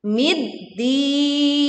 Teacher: leburkan alif lam ke huruf dal sehingga suaranya langsung masuk ke huruf dal tanpa membaca alif lamnya. Lalu berwakaf dengan panjang 2, 4 sampai 6 harokat.